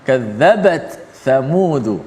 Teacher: membaca secara izhar, iaitu ta tu dijelaskan mati, dibunyikan mati. Sifat ta tu dibunyikan ketika mati dan disebut huruf tha pula selepas tu.